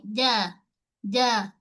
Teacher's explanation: Jim, tengah lidah dengan lelangit keras. Okey, dia sentuh lelangit.